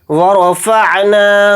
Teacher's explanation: انقض ظہرک ورفعنا لک ذکرک، ورفعنا، واو کو جلدی پڑھیں گے، را کو جلدی پڑھیں گے اور را کو یہاں پر موٹا یعنی پر پڑھیں گے ، فا کو عین ساکن کے اندر ملا کر پڑھیں گے،